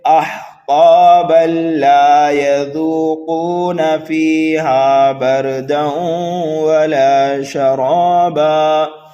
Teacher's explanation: ہم تنوین کے بعد میں لام آنے کی وجہ سے ادغام کریں گے